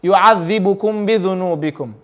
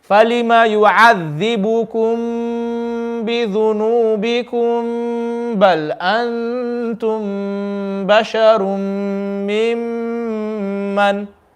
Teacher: Three ikhfa shafawi. Ikhfa, we have mim sakin, the next letter is ba, so we need to read it with ghunna. We can't just say yu'adhibukum bidhunubikum.